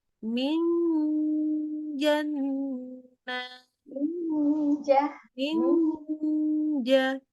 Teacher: Jadi bukan ujung lidah yang kena ke langit-langit tapi pakai Tengah lidah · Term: ikhfa